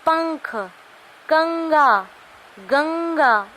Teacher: आप नाक से बोलते हो इन वर्णों को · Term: अनुस्वर